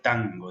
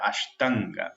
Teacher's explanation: la N gutural, que es la N de tango, de la palabra tango, de la palabra ashtanga, ahí como tragada en la garganta